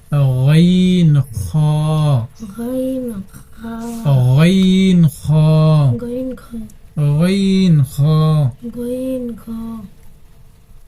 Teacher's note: হলকের শেষ ভাগ হইতে দুইটি হরফ উচ্চারিত হয়। গাইন খ, অর্থাৎ এই কণ্ঠনালীর শেষ হইতে উচ্চারিত হবে।